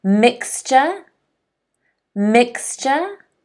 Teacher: the stress is on the first syllable. There are two syllables, mixture.